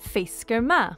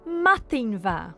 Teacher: The change from ma to va is called lenition, the softening of a consonant at the beginning of a word, and it's shown in writing by an H after the consonant.